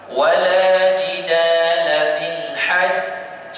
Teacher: Pada kalimah al-hajj, dia adalah qalqalah akbar, maknanya kita kena tahan sekejap seperti ada kata dua harakat